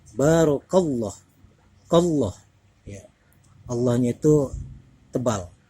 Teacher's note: didahului oleh huruf Kaf berharakat fathah maka di sini adalah wajib dibaca tafkhim atau dibaca tebal